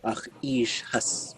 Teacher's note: the hus with a high tone, it's coming right after a kinship term